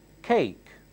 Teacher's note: Notice, I'm not saying cake. I'm saying between K and KH.